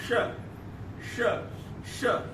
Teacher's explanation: यहाँ पर टकराता है तो हवा निकली यहां से, ठीक है, अंदर से हवा निकली बाहर और उस हवा का घर्षण हुआ, तो यहाँ पर ताल और जिह्वा का घर्षण हो रहा है और ये हवा तेजी से निकल रही है। श श श बोल के देखिए, जिह्वा में स्पर्श करिएगा, श तेज से है, और जो हवा निकल रही है तो या तो ओठ में स्पर्श करेगी या हाथ लगा लीजिए, गर्म हवा रहेगी। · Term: उष्ण वर्ण